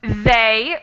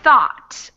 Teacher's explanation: they, which is voiced, and thought, which is unvoiced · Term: voiced TH